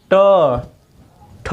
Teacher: आपका जिह्वा जो है वो मुड़कर कहाँ स्पर्श कर रही है? मूर्धा पर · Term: मूर्धन्य